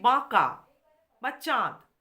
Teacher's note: চন্দ্রবিন্দু সহযোগে উচ্চারিত হয় ব্যবহৃত হয় তখন সেই স্বরকে বলা হয় সানুনাসিক স্বর